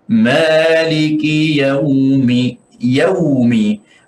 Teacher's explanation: Waw di sini bukan waw mad, jadi tidak perlu kita memanjangkan lebih daripada qadar yang tertentu 1 harakat saja. Kecuali kalau kita berhenti, itu lain.